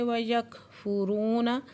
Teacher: کاف باریک پڑھیں گے اور کاف پہ ہمس ہو رہا ہے۔ رو پہ واو ساکن سے پہلے پیش ہے تو واو مدہ، دو حرکت کھینچ کے پڑھیں گے۔